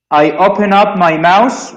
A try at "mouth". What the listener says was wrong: A mouse is an animal. A mouth with the th is this.